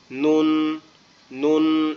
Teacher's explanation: এরপর হচ্ছে নুন, নুন অক্ষরটা হচ্ছে আমাদের জিহ্বার আগা তার বরাবর উপরের তালুর সঙ্গে লাগবে, লাগায় উচ্চারিত হবে কিভাবে নুন, নুন, মানে জিহ্বার আগাটা উপরের অংশের যে তালুটা আছে এটার সঙ্গে লাগবে, লেগে উচ্চারিত হবে নুন, নুন এরকম ভাবে।